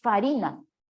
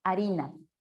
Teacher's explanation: Y todas las palabras del latín vulgar que tenían la consonante F esta F se aspiró, es decir, desapareció y se convirtió en el sonido H en un sonido mudo. El sonido desapareció, se aspiró y pasó a ser un sonido mudo como el de H. A ese proceso se lo llama aspiración.